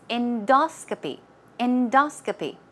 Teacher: stress goes right there on the second syllable